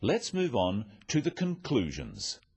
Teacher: Stressing conclusions because it's the key word in this sentence. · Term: sentence stress